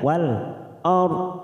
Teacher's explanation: Mawati wal ard masuk pada al qamariyah wal ard. Hati-hati ada ro sukun kita baca tafkim karena sebelumnya fathah.